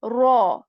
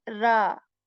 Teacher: So we are going to make it pur, which means that we are going to make it heavy. Raw rather than ra.